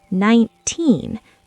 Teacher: The teen part is loud and long. The 9 is fast, 19. · For teen numbers like 13 or 19, the spotlight is at the end, teen. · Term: word stress